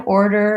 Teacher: really focus on that tight back R